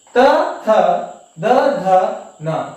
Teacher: ಇವುಗಳನ್ನ ನಾವು ನಮ್ಮ ಹಲ್ಲುಗಳ ಒಂದು ಸಹಾಯದಿಂದ ಉಚ್ಚರಿಸುತ್ತೇವೆ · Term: ದಂತ್ಯ ಅಕ್ಷರಗಳು